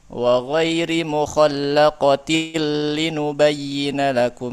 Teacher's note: nun sukun yang ada dalam tanwinnya masuk kepada huruf lam tanpa gunnah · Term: idgham bila gunnah